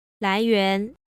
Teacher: notice that the entire second syllable is a little bit lower that is the it starts lower than the first syllable starts